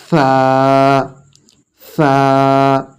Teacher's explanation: জিভ বের হবে, সামান্য একটু জিভ বের হবে।